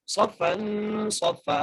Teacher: دوسرے صاد کو بھی فا سے ملانا ہے اور یہاں پر وقف کی صورت میں ہم فا کو ایک الف مدار کھینچ کے پڑھیں گے · بغیر کھینچے پڑھنا ہے بغیر جھٹکا دیے پڑھنا ہے والملک صفا صاد کو موٹا کر کے فا سے ملانا ہے